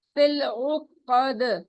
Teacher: قاف موٹا اونچا ہے اور دال پہ رکتے وقت ہم کلکلا کریں گے · عین حلق کے درمیان سے ادا ہوگا